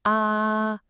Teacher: The first tone is high and totally flat, kind of like you're singing a high note.